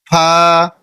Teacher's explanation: এটি আপনি উচ্চারণ করবেন নিচের ঠোটের পেট সামনের উপরের দুই দাঁতের আগার সঙ্গে লাগিয়ে